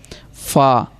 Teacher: اوپر کے دانتوں کے کنارے اور نچلے ہونٹ کے تر حصہ، یہ اوپر والے دانت اور نیچے کے ہونٹ کے تر حصہ، فا۔